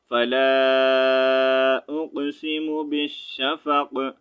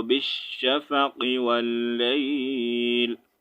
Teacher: تو ہم اس کو قاف کو ساکن کریں گے, قاف زیر قی نہیں ریڈ کریں گے وقف کی صورت میں